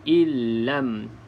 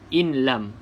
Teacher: Jadi bacaannya kena masuk ke dalam huruf lam ini. Illam, tanpa membunyikan nun langsung. In lam, itu dengar juga nun.